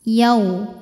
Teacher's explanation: sini tahan dulu wa yau ada harfulin atau huruf Lin sebab ada wau sukun didahului harakat fathah maka dibacanya cukup dilembutkan atau dilunakan